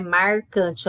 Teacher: tem um R retroflexo que é muito marcante